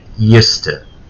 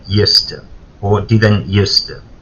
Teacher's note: remember that used to and didn't used to are normally linked. So we don't pronounce them, the word separately.